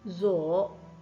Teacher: To leave or to go, we say in Chinese, zo, the third tone.